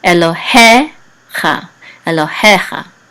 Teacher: The trope is over the he, so the accent is on he.